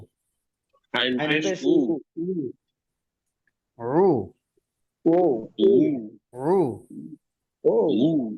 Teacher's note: গলায় চাপ দিয়ে আসবে রু। শুরুতে চাপ হবে শুধু, শেষে চাপ দিয়ে ধরে রাখা যাবে না। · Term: আইন